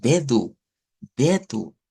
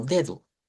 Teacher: entonces hacemos la fuerza en el D y no en la u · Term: sílaba tónica